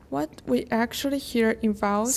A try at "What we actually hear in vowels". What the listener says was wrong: Slow down. What we actually hear in vowels, look at my hand kind of drawing out the rhythm. What we actually hear in vowels, you're going so fast that I'm just getting like this.